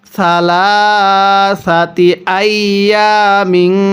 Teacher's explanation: তানবিনটা আমরা গুনাহ করে পড়ব, কারণ তানবিনের পরে ইকফার হরফ থাকলে তানবিনটা গুনাহ করে পড়তে হয়